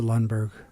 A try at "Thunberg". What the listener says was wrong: Oh, it's Thunberg, by the way. You said Lundberg.